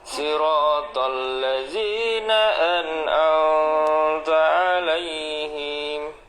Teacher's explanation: An'amta itu harus idhar ya, idhar syafawi. Jadi nggak boleh ditahan mimnya. Nggak boleh an'amta 'alaihim.